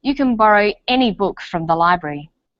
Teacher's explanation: when the word any is stressed this tells us that we're talking about an unrestricted quantity or unlimited choice